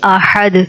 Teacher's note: جب دال پہ جزم ہوتا ہے تو دال کی آواز پلٹ کے واپس آتی ہے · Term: قلقلے